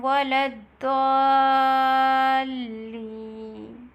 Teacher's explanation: Stretch the alif for 6 counts madde lazim.